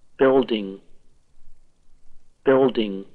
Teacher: Just like full and help, the L in building is kind of dark.